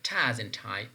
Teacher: this is voiceless, means that when you are producing ta, there is less amount of vibration in the vocal folds. Alveolar because your tongue is touching that alveolum region, or alveolar region, right?